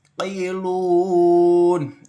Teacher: Tailun ain ini termasuk rakhah ya. Hati-hati dialirkan membacanya. Jadi ain itu kadang orang-orang itu suka terburu-buru membacanya. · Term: ain sukun